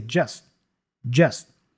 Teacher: the T for just is kind of dropped or pronounced as a stop consonant